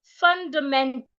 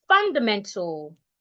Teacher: The letter A in the word is expected to be silent.